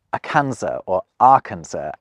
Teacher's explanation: the French tend to lose interest before they reach the last letter of a word, so the final S isn't pronounced